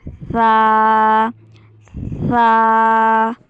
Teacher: जबान को याद रहे बाहर नहीं निकालना मुंह के दांतों के सिर्फ किनारे पर लगाना है